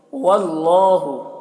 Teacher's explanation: यहाँ पर अल्लाह के लाम को पुर पढ़ेंगे, खड़ा ज़बर एक अलिफ के बराबर खींचेंगे।